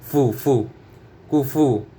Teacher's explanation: কাফ পেশ কু, ফা পেশ ফু, কুফু, কুফু। ফা থেকে বাতাস বের হবে, মুখ থেকে বাতাস বের হবে ফার সময়